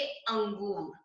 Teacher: इसका उच्चारण जब हम करते हैं तो क्या होता है कि वर्ण के बाद में न की ध्वनि सुनाई देती है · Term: अनुस्वार